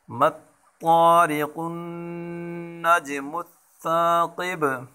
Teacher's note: جیم ساکن ہے، حروف قلقلہ ہے، قلقلہ کریں گے یہاں، اور وقفن میں با کے اوپر بھی قلقلہ کریں گے۔